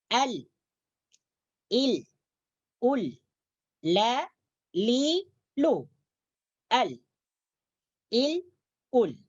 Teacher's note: ketika kita membaca huruf lam, maka tepi hujung lidah kita diangkat ke atas menyentuh langit-langit bagian depan.